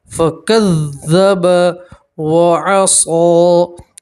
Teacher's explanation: صاد کے اوپر کھڑا زبر ہے تو آپ ایک الف کے برابر کھینچیں گے